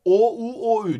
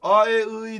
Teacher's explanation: Bak şöyle ağzın ağzın yuvarlak oluyor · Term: yuvarlak ünlüler